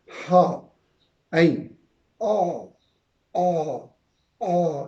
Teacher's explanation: اب اس کے بعد دوسرا مخرج ہے جو اس سے اوپر ہے حلق کے درمیان میں. یہاں سے دو حروف ادا ہوتے ہیں، عین اور ہا